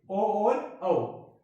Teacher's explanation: ये 2 ऐसे स्वर हैं जिनका उच्चारण कंठ और ओष्ठ दोनों मिलकर के करते हैं, तो ये कंठोष्ठ बोले जाते हैं।